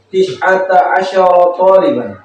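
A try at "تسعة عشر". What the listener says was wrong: Tish atau tis'a? Sin atau pakai shin?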